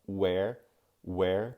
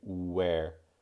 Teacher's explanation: there really is a kind of oo coming out first